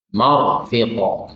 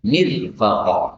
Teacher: Tarqiq. Karena ra sukun ini kalau dimulai dengan kasrah sebelumnya maka dibaca tipis mir. Tapi kalau di fathah sebelumnya atau di dhamma maka dibaca tebal atau tafkhim ya. · kalau mimnya fathah, maka ra-nya tebal.